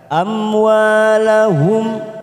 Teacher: Amwa fathah diikuti alif 2 harokat kita panjangkan. Amwalahum mim sukun namanya idhar safawi kita baca jelas tanpa mendengung.